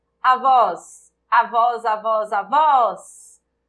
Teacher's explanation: A sílaba tônica é o vós. Então, eu tenho uma oxítona terminada em OS, na verdade.